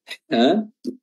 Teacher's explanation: Ha yang pertama keluar dari wasatul halq ya, tenggorokan bagian tengah disempitkan sehingga menimbulkan suara yang tajam